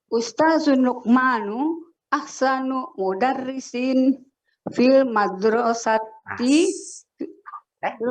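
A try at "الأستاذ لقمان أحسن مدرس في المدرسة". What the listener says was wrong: Nah, intonasinya salah tuh, nggak ada titiknya. Ulang lagi, Bu.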